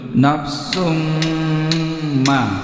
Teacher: Alimat nafsum, ini tanwin lumatain bertemu dengan mim, ini digunakan 3 ketukan, ada mim tasjid, ditahan 3 ketukan